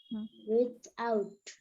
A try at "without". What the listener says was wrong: টিটাকে লাস্টে ঠ এর মতো করে উচ্চারণ করছে, ভেরি গুড।